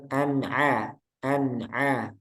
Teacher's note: Kemudian ainnya nanti jadi bukan a an misalnya an amta itu kurang. Yang benar an a jadi tipiskan lagi nanti. Jangan masuk hidung. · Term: huruf ain